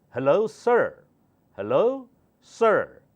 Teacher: British English the last R is not pronounced